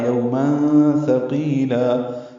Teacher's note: تنوین کے بعد سا آنے کی وجہ سے اخفا ہے